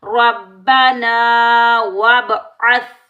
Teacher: با ساکن پر ہم کلکلا کریں گے